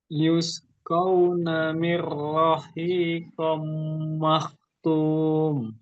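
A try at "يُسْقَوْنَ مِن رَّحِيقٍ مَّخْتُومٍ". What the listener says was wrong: Oke, jadi yang ini yang huruf qaf itu harokatnya kasrotain, Pak. Yang huruf qaf ini harokatnya seharusnya kasrotain.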